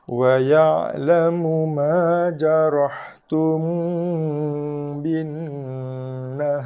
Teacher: Mim mati bertemu dengan ba, ikhfa syafawi, dengung, bibir tutup, tapi jangan tekan, jangan kacip bibir. Kemudian kita ada wajibul gunnah pada nun bersabdu.